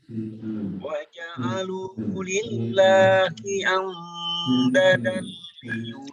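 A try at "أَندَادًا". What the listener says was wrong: Anda panjang.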